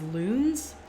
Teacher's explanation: it ends in a voice sound so the plural marker needs to be z